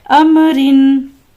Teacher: را کے نیچے 2 زیر ہے، لہٰذا اس را کو بھی باریک پڑھیں گے